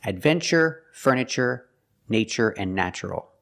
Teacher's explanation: there's no stress after the T so we pronounce it CH